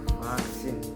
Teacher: bunyi yang dihasilkan dengan cara bibir bawah menyentuh atau mendekati gigi atas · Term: biodental